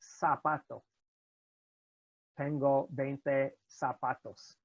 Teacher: It's not pronounced like z. We don't make a buzzing sound with it.